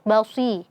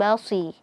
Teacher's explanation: Si-nya jangan lupa jangan sampai kita monyongkan bibir, basi. Nah, bibirnya tidak monyong ya, karena sodnya kasrah bukan dhammah.